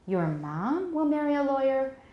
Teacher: a deep drop and then turning back up